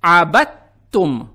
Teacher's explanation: Букву «та» мы произносим как удвоенную. Здесь мы видим знак ташдид или шадда. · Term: Идгам Мутаджанисайн